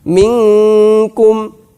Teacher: ketika kita mengucapkan nun, sudah ancang-ancang kaf. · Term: ikhfa